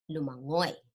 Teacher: the stress is on the final syllable so you're gonna pronounce the preceding syllables almost fast to get to that okay to get to the last so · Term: Mabilis